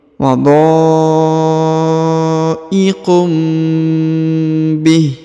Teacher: perhatikan huruf tanwin lagi UN bertemu dengan ba harakat i ya maka didengungkan dan ditahan ya berubah menjadi huruf mim